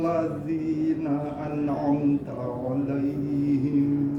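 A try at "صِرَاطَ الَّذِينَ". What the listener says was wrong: Posisi lidah jangan di tengah. Jadi ujung lidahnya siratal, karena ada huruf lam, berarti lidahnya di apa namanya itu? Gusi. Ya, gusi atas atau langit-langit, ya. Siratal. Lidahnya di langit-langit. Mungkin siratal ladzina, ya, siratal ladzina itu perlu dilatih, ya.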